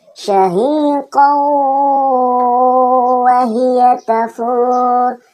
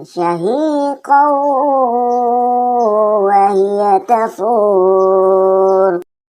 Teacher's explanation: nun sukun atau tanwin dilebur, masuk ke huruf setelah dan tertahan di situ atau didengunkan sebanyak 3-4 harokat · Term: idgham bigunnah